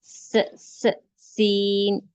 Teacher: سین کو ہم سختی سے پڑھیں گے اور اس میں سیٹی کی آواز ہوگی، س، اس، ایسے۔